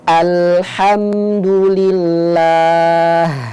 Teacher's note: ayat alhamdu ya Ee sahabat Iqra bisa perhatikan di situ alhamdu ada mim mati bertemu dengan huruf Dal dibacanya dengan jelas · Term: izhar syafawi